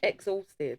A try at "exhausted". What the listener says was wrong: You're just emphasising it too much.